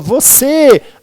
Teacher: Quando eu falo você, a última é a mais forte, portanto eu chamo de oxítona.